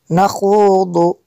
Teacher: خوا کو بھی پر کرنا ہے اور ضاد کو بھی پر کرنا ہے۔